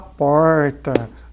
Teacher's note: Então, nosso aqui é o interiorano, paulistano, né? Nós temos aquele tradicional R, retroflexo, de porta